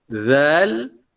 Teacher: Zal, dia berada di tengah-tengah. Ya, tengah-tengah ataupun di antara gigi atas dan gigi bawah.